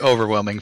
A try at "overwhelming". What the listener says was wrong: Well, it's overwhelmed instead of, or it almost sounds like you're saying overflemmed instead of overwhelmed.